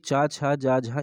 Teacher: तालव्य व्यंजन वे होते हैं जिनके उच्चारण में जिह्वा के पिछले भाग को तालु से संघर्ष करना पड़ता है।